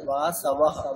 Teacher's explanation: ওকারটা যাতে না হয়, অকারের উচ্চারণটা অকারের মধ্যেই হবে